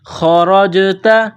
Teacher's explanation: جیم ساکن ہے تو جیم پر قلقلہ کریں گے